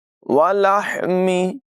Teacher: حا کی آواز حلق کے درمیان والے حصے سے ادا ہوگی